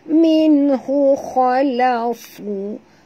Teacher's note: nun mati bertemu ha, tak boleh dengung izhar zahar halqi ya.